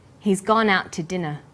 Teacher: We stress he's gone out and dinner the two is unstressed